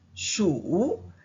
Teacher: Shu with the falling rising tune means mouse